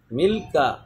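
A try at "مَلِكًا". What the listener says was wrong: جب کاف ہے تو کافی کیوں نکالنا مل قا تھوڑی کہنا ہے.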